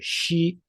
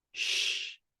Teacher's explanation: 西 is a voiced syllable in Mandarin with its final as ee, rather than the voiceless phoneme sh.